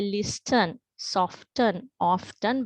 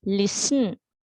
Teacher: මේ T අකුර අපි ශබ්ද නගා කියවන්නේ නැහැ